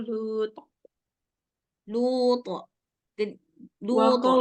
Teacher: dia seolah-olah barisnya itu kayak lebih ke fathah, tapi dia bukan 100% fathah. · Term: qalqalah